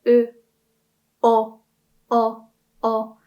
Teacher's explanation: you can kind of feel that the tongue is going backwards